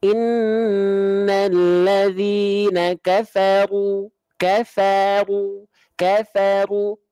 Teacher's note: ketika huruf ro ketika berharokat fathah ataupun dhammah, pangkal lidahnya naik.